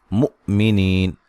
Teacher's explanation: ولی واو کو ادا کرتے ہونٹوں کو گول کرنا ہے. مؤمنین حمزہ جو ساکن ہے اس کو جھٹکے سے ادا کرنا ہے. نی یا مدہ ہے.